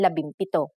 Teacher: if a p follows the NG connector the NG becomes an m